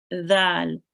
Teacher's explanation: And the dal, really softly, your tongue to your teeth.